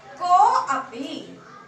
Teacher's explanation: अब यहाँ विसर्ग के पश्चात अ आ रहा है तो अ को जैसा कि हमने नियम बताया अवग्रह कर देंगे और विसर्ग को ओ कर देंगे तो बन जाएगा रामोस्ति। कह अपि, विसर्ग के पश्चात अ आ रहा है, अवग्रह हो जाएगा अ को और विसर्ग को ओ हो जाएगा